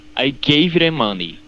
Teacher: I think I'm hearing you do like a flap T, like gave them almost